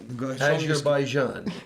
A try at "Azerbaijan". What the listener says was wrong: Azerbaijan. There's a ZH, but okay, it's